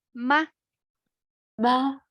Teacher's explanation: because they are both neutral tone right you didn't see any tone marks on it so that's why we need to read it short